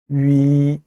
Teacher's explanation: 위는 단모음이라 입술의 모양이 변하면 안 돼요.